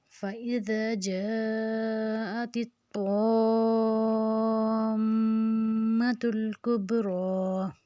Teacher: میم کے اوپر شد اور اس کی مد کو ہم 6 حرکت کھینچیں گے